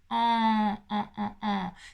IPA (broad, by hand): ɑ̃